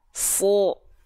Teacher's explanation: Kalau huruf tebal ketika fathah bunyi vokalnya bukan A tapi O.